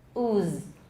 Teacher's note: voiceless so listen ooze can you hear that at the end there's no voicing in the second half of the z